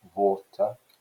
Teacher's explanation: often there's not a differentiation in indian english between a w and a v sound so water would become water like that and also the r